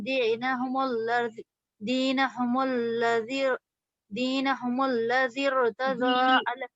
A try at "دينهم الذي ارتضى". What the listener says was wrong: مدہ کو تھوڑا کھینچیے. دینہم الذی، دال کے زبان نکالنا.